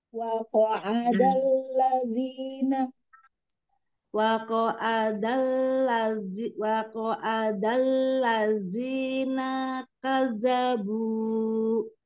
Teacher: dari ain ke dal tidak boleh ada tasdid